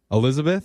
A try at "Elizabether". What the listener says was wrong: It's just Elizabeth, and then you add an ER.